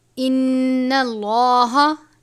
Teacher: ان اللہ، نون مشدد ہے، غنہ کریں گے، لام کو پر پڑھیں گے.